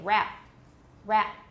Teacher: final stop so instead of saying rap with no creek rap many people say rap rap glottal stop and they produce p at the same time